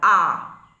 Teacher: এই স্বরধ্বনি উচ্চারণের সময় ঠোঁট প্রসারিত হয় না বা কুঞ্চিত হয় না একটা স্বাভাবিক অবস্থায় থাকে না প্রসারিত না কুঞ্চিত অবস্থায় তাই একে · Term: স্বাভাবিক স্বর